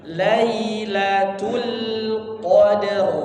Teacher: Lamnya balik, bibirnya senyumkan lagi ya. Tipis, lam tipis maka disenyumkan ya